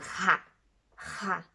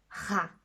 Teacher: ça vient du fond de la gorge